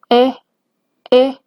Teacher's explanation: Esta vocal, que no existe en el español, es una vocal que está, digamos, en el espacio intermedio entre la E y la A, que para pronunciarlo tendríamos que hacer como el mismo sonido de la E, pero abriendo un poco más la boca. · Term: sexta vocal